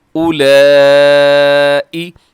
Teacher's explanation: دوسرے نمبر پر جو ہے اولائی، یہ بڑی مد ہے، مد متصل ہے